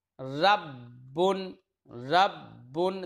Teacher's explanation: ہم نے پہلے با کو دوسرے با میں ادغام کر دیا اور مشدد پڑھ دیا